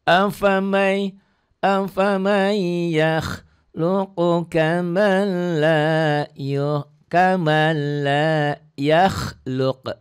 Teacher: idgham bila gunnah, nun mati ketemu lam.